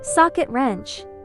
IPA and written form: ˈsɑːkɪt rɛntʃ (Socket Wrench)